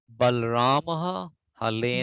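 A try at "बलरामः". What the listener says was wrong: Bal, no, not Bal. Balaramaha.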